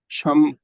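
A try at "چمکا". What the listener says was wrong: जी, च है, पहला पहला लेटर च च है, च। मीम। च के बाद मीम है।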